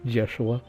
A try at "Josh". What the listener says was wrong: knows that adding the UA onto my name, it's just bad, it's terrible, and you should never do it because it never sounds normal.